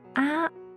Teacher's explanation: the first tone sounds quite even and flat And it is labeled by a small straight bar suggesting the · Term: flat tone